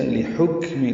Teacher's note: لحکم، لام کو جلدی ادا کریں گے، ہا وسط ہلک سے ادا کریں گے. کاف ساکن ہے، اس پہ بھی ہمس ہے جیسے صاد پہ ہمس ہے.